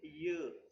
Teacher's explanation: front of the tongue is the active articulator and the hard palate is the passive articulator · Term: palatal